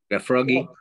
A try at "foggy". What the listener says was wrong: I like froggy, but it's foggy. Yeah, foggy, right? Yeah, foggy.